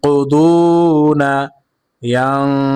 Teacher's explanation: নুন সাকিনকে গুণনা করেছি কারণ নুন সাকিনের পরে কফ আসছে